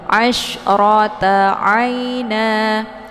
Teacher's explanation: untuk hukum bacaan ra-nya dibaca tafkhim karena ra-nya berharakat fathah. Jadi dibaca tebal.